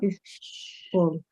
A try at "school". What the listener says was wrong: Shh. Don't say is, just shh. Make your mouth round. Shh. Just say. When you want try to quiet a child.